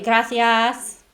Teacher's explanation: the tongue stays further back through that whole vowel sound instead of coming forwards